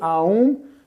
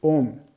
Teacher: But according to Sanskrit, it is violation of the Sanskrit rules to say Aum, because two vowels cannot come together. When A meets U, it is being changed. Both of them are gone. And instead we say O. Okay, that's why we don't say Aum, we say Om.